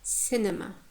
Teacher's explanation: The second syllable, penultimate syllable, is weak. Therefore, the first syllable takes the stress.